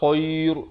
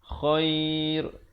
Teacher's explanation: Dia ra ni dia dinipis. Datang sebelumnya huruf ya. Yang bertanda mati.